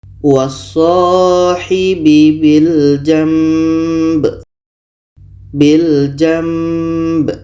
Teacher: dengan huruf mim maka kita baca wasohibi Bil jamb Bil jamb bunyi Nun kita tukar kepada mim dan di sini ada dengung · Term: iqlab